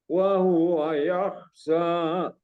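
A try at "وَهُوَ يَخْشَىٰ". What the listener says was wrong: Jadi yakhsha. Perlu ditambah lagi sya ya. Yakhsha gitu.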